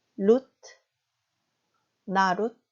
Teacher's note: 첫 번째, 두 번째 단어의 마지막 자음 드 발음은 유성음이 아닌 무성음 발음, 종성음의 무성음화 현상, 즉 트 발음으로 발음이 되는 거죠.